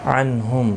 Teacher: نون ساکن کے بعد ہا آیا ہے تو اظہار حلقی ہوگا، گنہ نہیں کریں گے